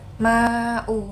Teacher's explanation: Ma'u ini dibaca mad wajib karena dia mad tabi'i yang bertemu dengan huruf hamzah dalam satu kalimat yang biasanya itu dibaca 4 atau 5 harokat.